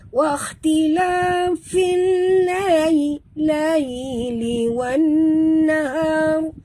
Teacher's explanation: Jadi sini alif lam namanya alif lam syamsiah ataupun idgham syamsi. Masukkan bunyi waw terus ke dalam nun, tidak membunyikan alif lam ya.